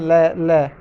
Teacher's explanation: जैसे ल आप बोल रहे हैं ल, तो जीभ जो है ऊपर जैसे टच कर रही है तो वहाँ से रास्ता बंद होकर साइडों से जो है हवा बाहर निकलती है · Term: पार्श्विक ध्वनियाँ